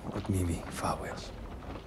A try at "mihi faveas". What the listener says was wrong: He seemed to say miwi faveas instead of mihi faveas or mi faveas. The actor seems to fairly regularly not pronounce the H sound, and I think this might be a deliberate choice.